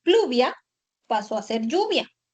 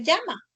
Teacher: Los grupos iniciales PL, CL y FL evolucionaron a la doble L.